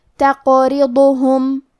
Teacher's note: قلقلہ کا معنی ہے حرف ساکن کو ہلانا، تو ہم حرف القاف کو ہلاتے ہوئے یہ کلمہ کو پڑھیں گے